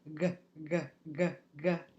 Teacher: the back of our tongue is moving back it's gonna retract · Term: scraper sounds